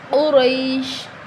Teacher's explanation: قاف اور را دونوں کو موٹا پڑھیں